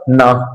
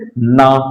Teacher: जो वायु अंदर से निकल रही है हमारी जीभ दांतों से टच होती हुई, ये आवाज कहां से निकलेगी, आपकी नासिका से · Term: दंत्य नासिक